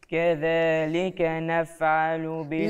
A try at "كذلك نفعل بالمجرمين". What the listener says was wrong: لا انا سامع الفاء متحبت، انت محركها. نف سنتين دول هنا على نص الشفاء اللي هي السفليه، يبقى ايه؟ نفعلوا مش نافعلوا.